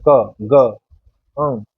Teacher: इनको बोलने में प्राण वायु कम लग रही है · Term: अल्प प्राण